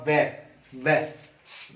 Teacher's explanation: दंत प्लस ओष्ठ, यानी कि निचला होठ और ऊपरले दांत। वह तो दंतोष्ठ है।